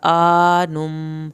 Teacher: آ کھینچا جائے گا کھڑی زبر کی وجہ سے ، نم میم کی شد پہ ایک الف کے برابر دیر